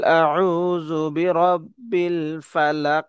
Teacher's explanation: এখানে কফ যেহেতু কলকলার হরফ এখানে কলকলা করে পড়ব